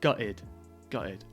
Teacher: quite often we don't pronounce the T